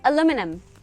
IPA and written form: əlumɪnəm (aluminum)